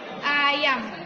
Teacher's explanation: vokal terbuka yang terjadi apabila lidah berada posisi serendah mungkin